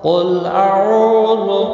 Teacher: قاف مستعلیہ ہے، پر پڑھا جائے گا